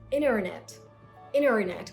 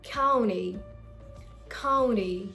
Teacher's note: Now this sound is the T sound, you know, the alphabet T after N. So whenever you find the letter T after the letter N, you're gonna drop the letter T and you're just gonna go on and pronounce the next word.